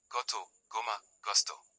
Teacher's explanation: G G has two main sounds. Before a, o, and u, it is pronounced as a hard g